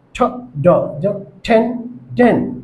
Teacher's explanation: জিবার অগ্রভাগ বা জিবার আগা উপরের দাঁতের মাড়ির সাথে অথবা আলভার রিজ হালকা স্পর্শ করে